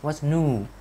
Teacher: cái âm what's new mình chúng ta hay đọc là yêu yêu yêu, nhưng mà người Mỹ họ sẽ thiên về chữ u hơn